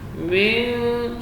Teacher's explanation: Kemudian nun sukun ketemu dengan dal ikhfa, sini dibaca tipis karena dal huruf tarqiq. Min, jadi nunnya disamarkan bunyinya antara masuk ke dalam huruf da dan jelas